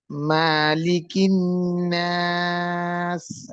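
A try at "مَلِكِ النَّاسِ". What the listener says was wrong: আচ্ছা, মা টান হবে না এখানে, ঠিক আছে? মা টান হবে না। আমরা পড়েছিলাম না, এক জবর এক জের এক পেশ কে হরকত বলে, হরকতের উচ্চারণ তাড়াতাড়ি করে পড়তে হয়, এই জন্য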